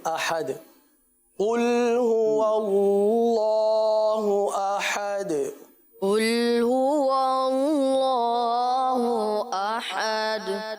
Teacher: آخر میں ہے احد، دال پر قلقلہ کر کے اس کو اس انداز سے پڑھیں گے